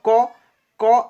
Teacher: অনেক সময় বলা হয় ক জিভার মূলটা আমাদের জিভা আছে না জীভার মূল অংশটা সেটা কিন্তু কণ্ঠ স্পর্শ করে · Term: কণ্ঠ ব্যঞ্জন